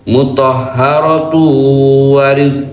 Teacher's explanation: Tanwin dhomatain ketemu waw masuk dengung tiga ketukan. Muthahharatuw wa ridh, wa dua ketukan.